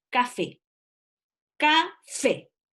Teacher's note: la sílaba donde se carga la voz se llama sílaba tónica, está en la última posición, son palabras agudas.